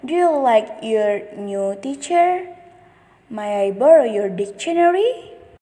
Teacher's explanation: Is the intonation that the voice rises at the end of the sentence. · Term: rising intonation